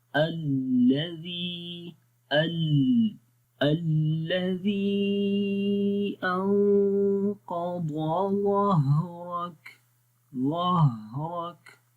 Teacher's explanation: ہا کے اوپر نرمی آ رہی ہے، آواز جاری ہو رہی ہے